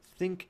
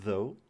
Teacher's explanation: Your tongue goes in between your teeth to make them, and these correspond to the TH sounds in think and though, so these are different. Think is voiceless, it doesn't have any vibrations in your throat, but though is voiced, it has some vibrations in your vocal folds